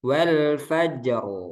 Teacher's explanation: ro sukun sebelumnya sukun sebelumnya fathah nih rnya tebal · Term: dibaca tebal